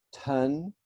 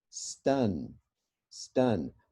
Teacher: ton puff of air stun no puff of air